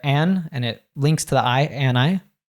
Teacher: oftentimes we just say an' or 'n. So he says there an', and it links to the I